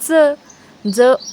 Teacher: जिभेचा दाताला स्पर्श कोणत्या शब्दाचा उच्चार करताना होतो तर ज ज उच्चार करताना आपली जीभ दाताला लागते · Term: दंत तालव्य